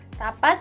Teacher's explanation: rapat bunyi tidak dilepaskan penuh